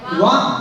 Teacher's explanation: ओष्ठ से बोला जाने वाला वर्ण है, ध्वनि है उ, और उसके बाद कंठ से बोला जाने वाला वर्ण है आ, ठीक है। इन दोनों को मिल गया, दोनों को मिलाने से बना वा।